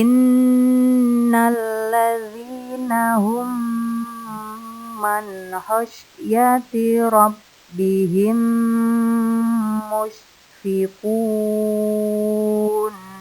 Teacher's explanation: mim sukun bertemu mim berarti membacanya disertai dengan dengung sekitar empat ketukan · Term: idgham mitslain